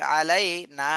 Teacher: নাতে এক আলিফ টান দিতে হবে মদের হরফ